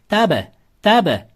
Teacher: B harfining ustida sukun kelyapti, to'g'rimi? B harfining ustida sukun kelsa, i'ga moyil tebratiladi.